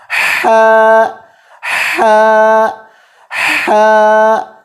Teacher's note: ہا کا مخرج بھی گلے کا درمیان والا حصہ ہے. پھر اس کو دبائیں اور یہاں سے حروف نکالنے کی کوشش کریں.